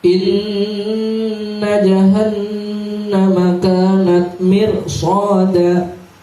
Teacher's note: Apabila ada ro mati jatuh setelah kasroh, maka itu dibaca tarqiq tipis. Tapi di sini karena dia di depan ro-nya terdapat shad yang termasuk bacaan berat, ya, maka tetap dibaca tebal atau tafkhim.